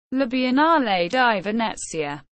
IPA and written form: la bi.enˈnaːle di veˈnɛttsja (La Biennale di Venezia)